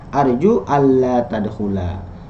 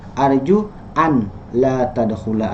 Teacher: Nah, maka tulisannya dilebur, nunnya hilang ya, maka masuk ke lam, nunnya hilang, lamnya jadi bertasydid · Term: Idgham